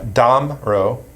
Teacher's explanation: the pronunciation the emphasis is on the first syllable